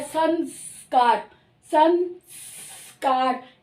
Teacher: स है स दांतों से आवाज आ रही है तो सन तो जो अनुस्वार है वह भी स की नकल कर रहा है